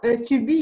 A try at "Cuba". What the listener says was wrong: Cuba. Cuba. Ce n'est pas Tubi. Il n'y a pas le coup de glotte. Cuba.